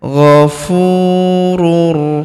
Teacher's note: huruf u kita panjangkan dua harakat karena terdapat wau sukun di depannya